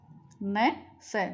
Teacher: न स बोलकर देखो, तो ये जीभ दांत और मसूड़ा दोनों को छू रही है, तो ये हिंदी में वर्तस्य कहलाते हैं, संस्कृत में इनको दंती बोलते हैं। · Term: वर्तस्य वर्ण